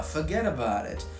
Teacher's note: the glide is reduced. It's monothongal. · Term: glide reduction